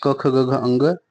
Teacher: कंठ वर्ण के अंतर्गत क वर्ग आता है